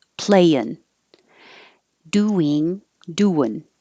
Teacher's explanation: change the ing to in or un. You're moving the tongue to the front for the in and the front.